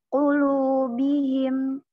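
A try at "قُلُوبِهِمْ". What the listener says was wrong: Qulubihim him. Kalau tadi kurang yang itu. Tadi yang bihim atau yang bihi kurang.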